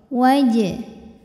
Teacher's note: Jim yang sukunnya sukun asli dan ada di tengah bacaan kita maka Jim ini dipantulkan bacanya dengan pantulan yang kecil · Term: Qalqalah Sugra